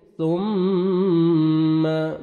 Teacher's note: मीम मुशद्दद है, नोज में sound लेके जाएंगे। थुम्मा मा मद्दे जायज़ है, हरूफ मद्दा के बाद नेक्स्ट कलिमा के स्टार्टिंग में हमजा आ रहा है, 3 से 4 सेकंड एक्स्ट्रा मद करेंगे।